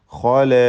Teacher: ഖാഇന് പൂർണ്ണമായ തഫ്ഖീം കൊടുക്കണം. ഇസ്തിഅലാഇൻ്റെ ഹർഫാണ്, തടിപ്പിച്ച് ഖ എന്ന് പറയുക.